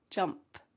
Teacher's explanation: Don't forget that little p little puff of air at the end of the word jump. · Here we have a light P at the end of jump.